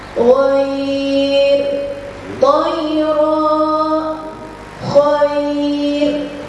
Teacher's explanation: ro dibaca tipis karena didahului oleh ya sukun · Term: ro tipis